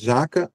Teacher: Porque em jaca o acento está em já, né? Não tem acento gráfico, mas o acento prosódico está em já.